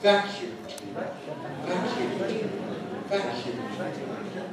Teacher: Let's hear the falling tone on vac. That's the important thing, that's the nucleus of the intonation.